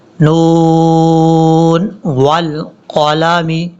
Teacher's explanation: یہاں سے نون والقلم، نون کے اوپر جو ہے یہ مد ہے، آپ نے اس مد کو، یہ مد لازم ہے، اس کی مقدار آپ نے پوری کرنی ہے۔ نون والقلم، بعض اوقات لوگ پڑھتے ہیں والقلم، ایسا نہیں کرنا، یہ جو دو نقطوں والا قاف ہے یہ پر پڑھا جاتا ہے۔